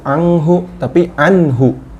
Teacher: Nun sukun ketemu ha. Ha huruf izhar, jelas. Enggak boleh didengungkan, ya.